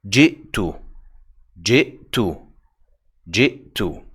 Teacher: This is a non-voweled hamza. That's why it sounded like a glottal stop again.